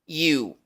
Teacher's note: El sonido asociado a la Y, que es algo parecido a la I del español, pero con la lengua ligeramente más hacia arriba